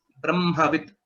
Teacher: So the Bakara is a Alpa Prana.